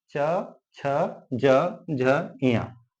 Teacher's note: जिन व्यंजनों को उच्चारित करते समय जीभ तलवा को टच करती है उसे हम तालव्य व्यंजन कहते हैं।